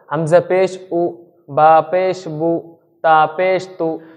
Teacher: এটাই বলছে যে পেশকে আমাদের মারুফ পড়তে হবে, সঙ্গে তাড়াতাড়ি পড়তে হবে, আর পেশের আওয়াজটা একটু মানে সামনের দিকে আসে, আর হচ্ছে ঠোঁট গোল করে পড়তে হবে